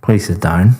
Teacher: very flat intonation going down